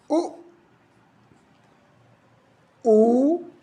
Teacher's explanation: उ में क्या हुआ, ओठ गोल